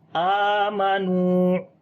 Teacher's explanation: آ کو لمبا کریں گے, کھڑی زبر ہے اس کے اوپر